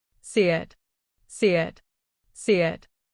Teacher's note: She let the e sound stretch like a smile and then she let her tongue fall lightly into the it.